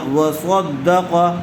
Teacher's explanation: صاد کو بھی پر کیجئے، اور آگے قاف ہے، قاف کو اچھی طرح سے پر کیجئے